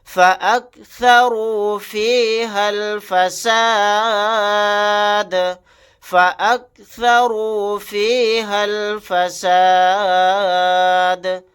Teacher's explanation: ہا کو ڈائریکٹ لام کے ساتھ ملا دیں گے، یہ الف نہیں پڑھا جائے گا۔ آیت کرنے کی صورت میں دال کو ساکن بنائیں گے۔